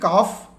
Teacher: জিহবার গোড়া এবং তার বরাবর উপরের তালু এই স্থান থেকে উচ্চারিত হয়